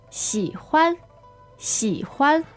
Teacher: 喜欢，喜欢。 So this is XI third tone, HUAN neutral tone